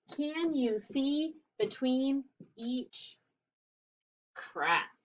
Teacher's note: Notice that my voice goes up because it's a question.